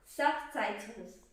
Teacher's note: I want the T's and the S's as well as the accent on the first syllable